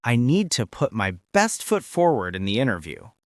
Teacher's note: Listen to the intonation. It goes up a little and then down at the end.